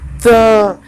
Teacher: जो आपकी जीभ है वो किसे टच कर रही है? आपके दांत को टच कर रही है। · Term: त वर्ग